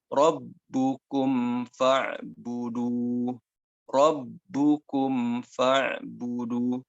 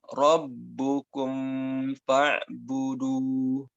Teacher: Jadi ketika idhar safawi itu bibirnya betul-betul ditutup rapat, baru setelah itu huruf setelahnya.